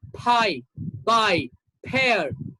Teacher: When you pronounce these two sounds, your lips touch each other. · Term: bilabial sounds